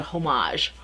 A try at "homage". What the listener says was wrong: Isn't it pronounced homage? You don't pronounce the H. Although I think in Britain you might pronounce the H. Well, do they say honor? No, they say honor, not the honor.